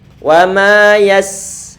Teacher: Angin dibuat mengalir. Kalau kita menyebutkan yas, perlu untuk kita pastikan bahwa ada angin yang keluar dan suara kita buat mengalir. Dan nggak boleh untuk dikolok-kolahkan. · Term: rikhawah